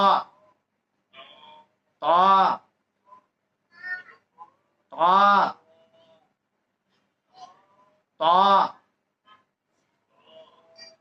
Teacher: জিহ্বার আগা সামনের উপরে দুই দাঁতের গোড়া, জিহ্বার আগা সামনের উপরে দুই দাঁতের গোড়া, জিহ্বার আগা সামনের উপরে দুই দাঁতের গোড়া।